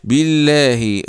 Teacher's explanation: اللام في اسم الجلاله مرققه لانها جاءت بعد كسر